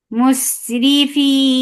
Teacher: Ra will be light because there is kasra on it.